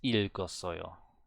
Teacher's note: But it's ilgosoyo with a clear L